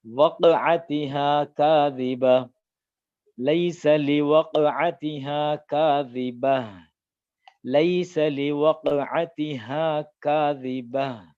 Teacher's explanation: சுக்குன் இருக்கு அப்படின்னா அந்த இடத்துல சுக்குன் வந்து லேசா கல்கலா செஞ்சு ஓதும்